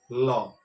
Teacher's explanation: জিভটা যখন উল্টে গিয়ে তালুর কাছে স্পর্শ একটু করছে, তখন জিভের দুটো সাইড কিন্তু ফাঁকা হয়ে যাচ্ছে, ল। তাহলে এই দুটো সাইড দিয়ে আমাদের যে শ্বাসবায়ু বেরিয়ে আসছে, দুটো সাইড দিয়ে, জিভের দুটো সাইড দিয়ে শ্বাসবায়ুটা বেরিয়ে আসছে। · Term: পার্শ্বিক ধ্বনি